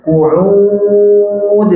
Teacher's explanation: qafnya tebal. Coba. Ain dal jangan tebal.